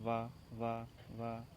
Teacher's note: दंतोष्ठ, ऊपर के दांत और निचला ओंठ